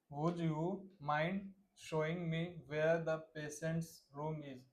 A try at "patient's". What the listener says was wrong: पेशेंस, हाँ शाह आएगा ना, अभी भी सा और शाह में दिक्कत है थोड़ी सी हमारी, और प्रैक्टिस करेंगे, है ना।